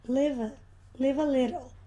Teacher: Então esse V emenda aqui com o A. O V emenda com o A.